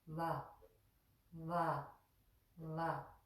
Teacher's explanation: V is pronounced very softly the way it's pronounced is that we put our upper front teeth on the inner moist area of our lower lip